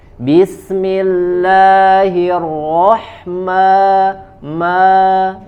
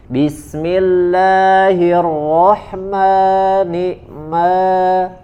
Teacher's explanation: Huruf yang keluar dari al-jauf, rongga yang meliputi dari tenggorokan sampai ke mulut, itu adalah huruf mad. Maka ketika huruf mad ini bersatu dengan huruf nun dan mim, maka madnya tidak boleh masuk ke dalam hidung